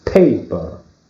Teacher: the stress is in the first syllable. So paper.